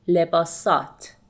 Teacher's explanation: in speaking we omit he sound and we say لباسات instead of لباس هات